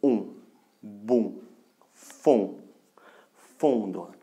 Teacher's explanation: des voyelles nasales que nous prononçons à l'aide de l'air qui sort et par la bouche et par le nez